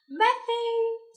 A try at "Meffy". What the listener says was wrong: Not methy. Not methy. With an F.